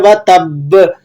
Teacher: با پر آپ نے قلقلہ کرنا ہے، قلقلہ اکبر